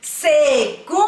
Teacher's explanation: A sílaba mais forte é o gum, porque nós falamos mais forte ela quando nós chamamos a palavra. E o gum também é uma sílaba que tem o som nasal.